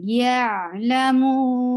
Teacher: So whenever you find mad letter before it, you will stretch that mad letter to, you can stretch it 2, 4, or 6 haraka, but we are stretching here 4 haraka long.